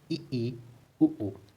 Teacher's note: संवृत में क्या है, मुंह सबसे कम खुलता है।